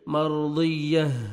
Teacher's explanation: جب سٹاپ کریں گے تا کو ہاں میں چینج کریں گے، ہاں کا ساؤنڈ آنا چاہیے